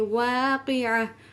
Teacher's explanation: وقف کی حالت میں اس تا کو ہاں میں بدل دیں گے